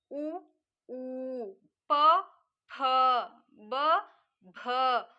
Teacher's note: ಇವೆಲ್ಲ ತುಟಿಯ ತುಟಿಯ ಭಾಗದಲ್ಲಿ ಇವುಗಳ ಉಚ್ಚಾರಣೆ ಆಗುವುದರಿಂದ ಇವುಗಳಿಗೆ ಓಸ್ಟ್ಯ ಅಂತ ಕರೀತೀವಿ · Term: ಓಷ್ಟ್ಯ